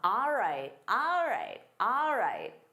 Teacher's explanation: instead of saying all right, native speakers commonly say ah.